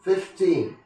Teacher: words that end in teen get the stress on the last one, teen.